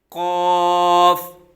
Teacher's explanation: قاف جو نقطوں والا ہے یہ زبان کی جڑ اور تالو کے نرم حصے سے ادا ہوتا ہے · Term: حروف مستعلیہ